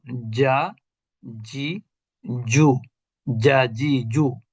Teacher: জিম তো শক্ত অক্ষর, অর্থাৎ জিহ্বার মধ্যভাগ থেকে উচ্চারিত হয়। তা জিহ্বার মধ্যভাগ মানেই হচ্ছে চাপ, ঠিক না?